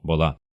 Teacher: А в первом слоге слово обычно звучит ближе к о